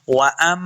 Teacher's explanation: वअम्मा, वअम, वअम, वाव को जब पढ़ेंगे दोनों होंठ गोल करने हैं। वअम, हमज़ा को मीम के साथ मिलाना है, غنہ کریں گے